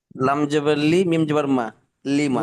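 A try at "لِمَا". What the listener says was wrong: লাম জবর না, লাম জের লি। লিমা।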